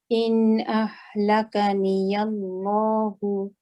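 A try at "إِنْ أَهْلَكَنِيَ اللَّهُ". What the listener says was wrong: Okay, so don't forget the ha from the bottom of the throat. In ahlakani Allahu. And I want the kaf fix. So the kaf needs to be, remember, the voice needs to be coming out.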